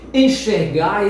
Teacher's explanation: Enxergar, esse E e esse N pronuncia-se como se fosse um E nasalizado.